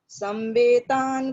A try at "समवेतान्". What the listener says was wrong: समावेतान्, मकार पूर्णं वदतु। समावेतान्